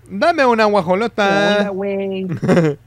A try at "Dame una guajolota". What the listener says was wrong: No, you gotta talk like you're singing. Because that's what they say in Spanish, cantarito. Estás hablando así. No, chilango is like, ¿qué onda? Versus, un cantarito, así habla uno porque está cantando cuando habla. So, they're basically talking like this, with like a little, it's weird.